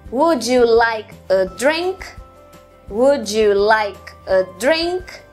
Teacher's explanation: Você tem duas sílabas fracas, uma forte, uma fraca e uma forte.